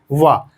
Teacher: वा देखिए यहां पर दंत और ओष्ठ दोनों का सम्मिलन है, ध्यान दीजिए। वा दांतों से भी टकरा रही है और होंठ से भी टकरा कर निकल रही है, वा। तो इसलिए इसका हो जाएगा दंताओष्ठ।